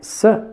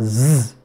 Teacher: sir and z and you can notice sir is voiceless and is voiced because there's the vibration in the vocal folds